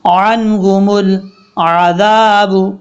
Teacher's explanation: اب یہاں پر عین کو حمزہ کی آواز نہیں آنی چاہیے، نارمل طریقے سے پڑھنا ہے